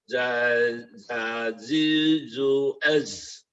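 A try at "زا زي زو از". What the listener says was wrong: Oh iya, nah di sini Buya, Buya berikan lebih banyak jaharnya lagi pada huruf ini. Jadi getarnya tuh lebih diseret lebih dalam lagi.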